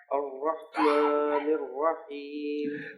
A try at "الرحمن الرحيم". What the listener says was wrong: ہاں کو کنٹرول کریں اور اس کو آواز کو کھل کر ادا ہونا چاہیے، نہ کہ ایسا محسوس نہ ہو کہ مخرج دب گیا. الرحمن الرحیم ایسے